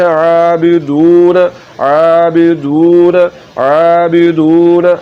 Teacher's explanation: تو وہ واو مدہ کہلاتا ہے، تو یہ واو مدہ ہے، یہاں پر آپ نے پیش کو لمبا کرنا ہے اور اس کو پڑھنا ہے عابدون عابدون عابدون۔ اگر آپ نے